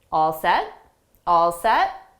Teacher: we'll just use 2 words with a rising intonation to show it's a question.